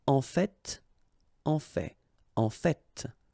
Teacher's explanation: whether you pronounce the final T or not, you can hear both